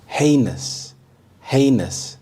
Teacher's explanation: The stress is on the first syllable, heinous